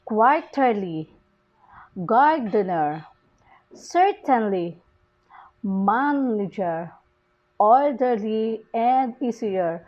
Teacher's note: Can't you see the stress is put on the first syllable of the word? And usually the words ends with ly or er. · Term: multisyllabic stress